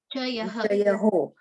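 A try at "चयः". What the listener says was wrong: Pronounce the O. Chayaha. There is no O there.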